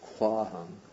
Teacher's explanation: Now the Buddha says, and first I should say that this apparent word kwahang is actually ko plus ahang. When they join, the O turns to a V, and the A of ahang gets lengthened, and so this is the result of sandhi, kwahang.